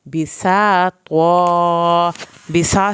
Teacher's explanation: سین کو سیٹی کے آواز کے ساتھ پڑھنا ہے